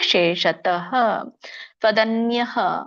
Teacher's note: ಅಲ್ಪವಾಗಿ ವಿಸರ್ಗ ಉಚ್ಚಾರಣೆ ಮಾಡಬೇಕು ಹಕಾರ